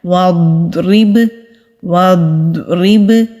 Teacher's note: اسی طرح با کی آواز بھی پلٹ کر آتی ہے جب با ساکن ہوتا ہے، وَضْرِب وَضْرِب۔ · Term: کلکلا